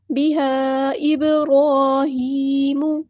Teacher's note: disconnected مد، مد منفصل جائز یعنی کہ چھوٹی مد